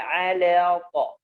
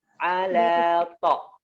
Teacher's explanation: Tidak boleh ala seakan-akan ada tasydid, ya, padahal dia tidak ada tasydid. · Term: dipisah